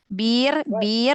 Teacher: rnya tipiskan kasih takrir sedikit ya